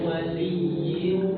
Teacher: kalau bertemu wau dia langsung monyong bersuara u